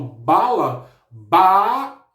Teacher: O ba é a minha sílaba mais forte dessa palavra. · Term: sílaba tônica